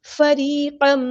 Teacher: را ہم یہاں پہ باریک پڑھیں گے کیونکہ اس کے نیچے زیر آئی ہے، کسرہ آئی ہے، یا مدہ اس سے پہلے یا ساکن سے پہلے زیر ہے تو یا مدہ بن گئی ہے، ایک الف کے برابر لمبا کریں گے۔